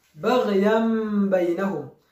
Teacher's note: Turifatira nun ifite sukuni tukayihinduramo iriya mim mu cyimbo cya nun, ubwo turi busomemo mim ifite sukuni. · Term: iqlab